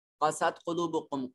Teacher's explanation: قاف کو موٹا کر کے پڑھیں گے، یہ نقطوں والا قاف ہے